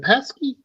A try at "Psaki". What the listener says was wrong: Jen Psaki. The P is silent.